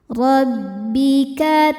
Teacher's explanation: dibaca tafkhim karena berharakat fathah. Cara bacanya ditebalkan.